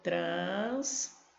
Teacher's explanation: Ó, sílaba forte, a última.